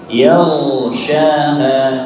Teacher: Kemudian yaghshaha, ghainnya dialirkan karena ghain memiliki sifat huruf ar-rakhawah. Yaghshaha, durasi alirannya sedikit agak lama.